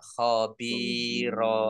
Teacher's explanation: karena wakaf maka dibaca fathah dan panjang dua harakat khobiron dibaca khobiro namanya madwat Mad Iwat Ya baik kita Artikan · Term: mat iwad